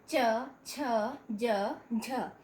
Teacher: इसके बाद च वर्ग में, च वर्ग के वर्णों को जब हम बोलते हैं, च छ ज झ, तो इनको बोलने के लिए हमारी जीभ हमेशा तालू से छुआती है। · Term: तालव्य